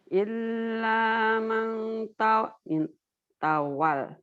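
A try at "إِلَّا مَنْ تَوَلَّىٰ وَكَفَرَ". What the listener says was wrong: Illanya panjang, Bu. Illa ma tawalla wa kafar. Illa ma tawalla wa kafar.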